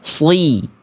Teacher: Tetap jelas vokal I-nya walaupun dia huruf yang tebal.